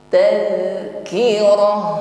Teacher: zal sukun di sini tampak sifat yang menyertainya yaitu rakhawah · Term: sifat rakhawah